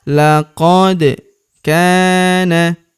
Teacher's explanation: huruf kaf kita panjangkan dua harakat karena terdapat tanda alif di depannya